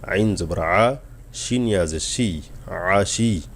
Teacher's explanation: আইন গলা নিতে হবে।